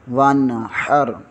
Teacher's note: نون ساکن کے آگے حروف حلقی میں سے ح آ رہا ہے، اس لیے یہاں پر اظہار ہوگا، غنہ نہیں ہوگا۔